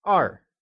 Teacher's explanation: 2 is 二 and is pronounced with a falling tone. It is said as 二.